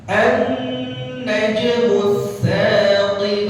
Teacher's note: kalimat an-najm, nun musyaddadah, nun bertasydid, ditahan atau dibaca ghunnah 2 harakat. Terus najm qalqalah sughra.